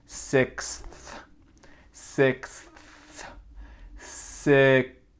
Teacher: Après, on a le son X, X, comme ça, X, six. Et après, on a le son TH, sixth. Sixth, sixth, comme ça avec la langue entre les dents.